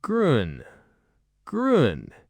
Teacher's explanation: Round your lips like you're about to say ooh, like the ooh in moon. Hold them there. Now say e like the e in feet without moving them. >> Lips round for ooh.